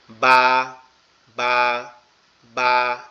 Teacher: দুই ঠোঁট একসাথে লাগবে, লেগে উচ্চারিত হবে বা বা বা এভাবে।